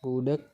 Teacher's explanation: direalisasikan sebagai bunyi G atau k apabila berposisi sebagai Koda